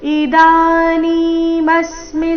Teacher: ಇದಾನಿ ದ ಮತ್ತೆ ನೀ ಎರಡು ದೀರ್ಘ ಮುಂದೆ ಮ ಮೇಲೆ ಆಘಾತ